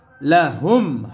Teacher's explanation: মিম সাকিনে ইজহার, গুন্নাহ সারা স্পষ্ট হবে।